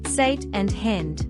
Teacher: The short a in words such as sat and hand is pronounced a bit more like e. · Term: Short a sound, Short A sound